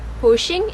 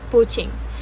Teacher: Finally, the most prominent part is where he pronounces poaching. He uses sh sound instead of ch sound, which sounds like poaching instead of poaching.